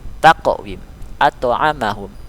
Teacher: bunyi pantulannya kecil sesuai dengan namanya sugro, kecil. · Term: qalqalah sugro